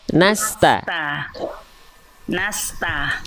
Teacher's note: Jangan nasta'in jadi shod. Bukan nas tapi nas. Jangan pangkal lidahnya naik.